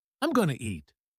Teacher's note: notice how going to becomes gonna